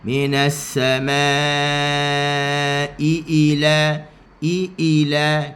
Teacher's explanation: Kita tekan sedikit pada hamzah yang kedua. Tekan pada intonasi suara an-nabru untuk kita bezakan antara kalimah assama dengan kalimah ila.